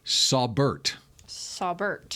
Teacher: I bet it's Saubert, but they've got the emphasis on the Bert. Wrong syllable.